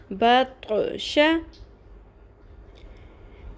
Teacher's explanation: طا کو پر کریں اور کلکلا بھی ساتھ ادا کریں